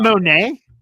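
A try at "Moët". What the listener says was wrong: No, it's not Monet. There's no N in there. No N. Moet.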